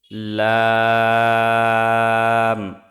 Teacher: জিহ্বার আগার কিনারা সামনের উপরের দাঁতের মাড়ির সঙ্গে লাগিয়ে উচ্চারিত হয় লাম